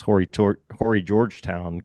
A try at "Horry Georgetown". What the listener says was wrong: And I learned that it's Ori Georgetown. You don't pronounce the H.